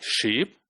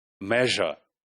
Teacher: So sh is voiceless and j is voice.